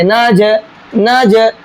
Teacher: جیم بھی حروف قلقلہ میں سے ہے اور اس کے اوپر جزم بھی ہے تو یہاں پر بھی قلقلہ کریں گے